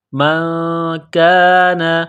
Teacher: نون ساکن کے بعد کاف ہے، حروف اخفا ہے تو نون ساکن پر غنہ کریں گے، کاف کو باریک کرنا ہے